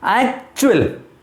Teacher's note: that oo is very silent, very short, minutely pronounced